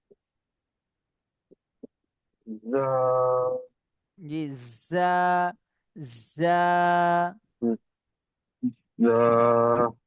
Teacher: জাটা একটু সিটি দিয়ে পড়তে হবে